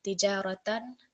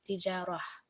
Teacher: it will take a sukoon and the ta sound will be replaced for a ha sound. So we see here the example is tijaratan, and on pausing it will become tijarah. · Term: ha with a sukoon